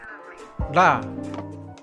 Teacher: un sonido retroflejo aproximante sonoro. El otro sonido de R no pertenece al japonés formal ni al japonés estándar, pero no podemos negar su existencia ya que lo hemos escuchado en algunas series o animes.